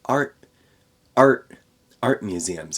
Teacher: I'm not saying a t there at the end of the word art I'm saying a glottal stop art art art museums it's cutting off in my throat instead · it's cutting off in my throat instead of finishing the T